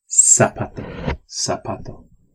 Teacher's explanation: The Z is not pronounced like a Z. It's only pronounced like an S in Spanish. It's always pronounced like an S in Spanish.